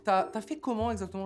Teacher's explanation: French speakers will often abbreviate tu as to ta, and indeed any other verb that starts with a vowel can be squished together like this.